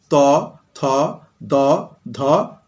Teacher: যে সকল ধ্বনি উচ্চারণের সময় জিহ্বা উপরের পাটির দাঁতকে স্পর্শ করে তাদেরকে বলে দন্তধ্বনি।